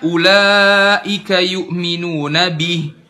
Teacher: Harusnya kan ulaika yu'minuna bih. Bih, kasrohnya jelas i, bukan dimiringkan jadi e